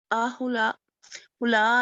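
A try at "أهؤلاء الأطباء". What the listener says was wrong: हमजा को अलहदा पढ़ें जी, हमजा को अलहदा पढ़ें और हा उलाई को अलहदा पढ़ें।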